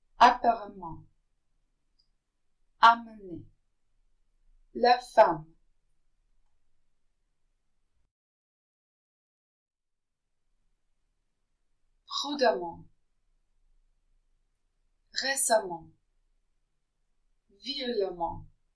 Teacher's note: If the letters EM are followed by another M, or in other words, if we have EMM together in a word, they're pronounced not on, but am. This time it isn't a nasal sound.